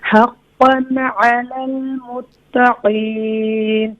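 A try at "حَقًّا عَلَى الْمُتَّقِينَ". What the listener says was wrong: मुत्तक़ी, ता क्लियर होनी चाहिए, क़ाफ को भी मोटा करें। हक़्क़न अलल मुत्तक़ीन।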